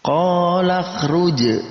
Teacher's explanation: ada qalqalah pada huruf jim yang berharokat sukun. Maka kita pantulkan huruf jim yang harokat sukun ini